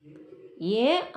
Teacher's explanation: ചുരുക്കി ഉച്ചരിക്കണ ഏ ഇല്ല, നീട്ടി ഉച്ചരിക്കണ ഏ ആണുള്ളത്. ഏയും ഐയും ആണുള്ളത്.